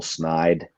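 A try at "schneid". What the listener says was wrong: You take the CH out of there.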